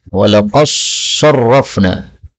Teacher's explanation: Yang pertama pada ayat 54, walaqad sa, dal ketemu sad, ini boleh idgham sehingga dalnya hilang menjadi sad.